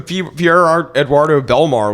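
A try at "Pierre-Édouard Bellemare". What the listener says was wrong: It was not Eduardo. No, it wasn't. Definitely not. Definitely wasn't Eduardo.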